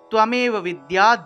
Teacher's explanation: সবসময় মনে রাখবেন যে জফলার উচ্চারণটা ইয় রূপে হয়ে থাকে, ইয়। তাহলে এখানে জফলা থাকায় আমরা বিদ ইয়া উচ্চারণ করেছি, যে বিদ তারপরে জফলার পরিবর্তে ইয়, তারপরে আকার আছে বিদায় আকার দিয়ে দিলাম।